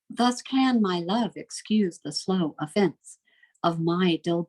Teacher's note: Each metrical foot has 10 syllables, each foot consisting of an unstressed syllable followed by a stressed syllable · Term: Iambic pentameter